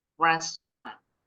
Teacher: This word has 3 syllables, but when speaking, the native English speakers pronounce it with only 2 syllables. So they pronounce it as restaurant.